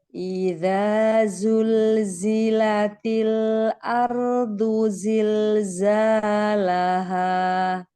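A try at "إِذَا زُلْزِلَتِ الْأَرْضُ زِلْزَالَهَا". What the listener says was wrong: Nah, hati-hati di lam sukun ya tadi ya, yang pertama ya. Iza zulzila. Zulzilat ini tadi ya hampir ada tawalut ya. pantulan. Hati-hati.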